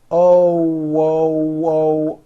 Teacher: you notice how my lips are all the way forward and the front of my lips are opening and closing like the front of a trumpet oh whoa and you hear that little w sound in there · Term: o sound